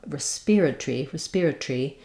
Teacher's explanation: they reduce the Tory those two syllables to one syllable um respiratory respiratory um keeping the e but losing the or